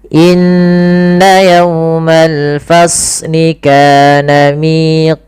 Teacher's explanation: Nah, ini kepanjangan. Cukup saja dua harakat dengan menaikkan sedikit suaranya. Inna yaumal fasniana miq. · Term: mad thabiiah